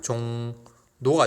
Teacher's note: 그러니까 리을 이외에 왔을 때 이 리을이 니은으로 바뀌는 것을 리을의 비음화라고 합니다